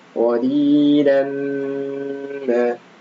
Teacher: la tanwin fathah bertemu mim maka dibaca idgham bi gunnah, ditahan 2 harakat